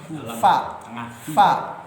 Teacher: Fa mahrajnya adalah ya gigi seri atas ya bertemu dengan bibir yang bawah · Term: huruf safatain